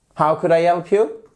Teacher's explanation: On redescend sur la fin